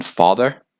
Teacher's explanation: it's a low back vowel and it's like the are in father